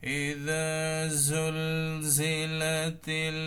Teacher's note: ইদা জুলজিলাতিল, আবারও লাম সাকিন, এখানে আলিফ উচ্চারণ হবে না, তিল এখানে একবারে ডাইরেক্ট লাগবে